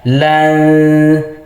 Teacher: nun mati di sini disamarkan ke huruf ta, lan, sambil dibaca dengung atau ditahan 2 harokat. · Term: ikhfa